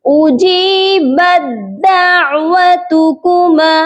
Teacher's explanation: با کو دال کے ساتھ ملائیں گے اور تا کو چھوڑ دیں گے